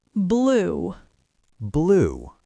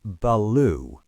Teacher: It's not beloo. The B and L are a single explosive event. · You can't leave any gap. Your tongue has to be in position for the L or the R before you even open your lips for the P or the B.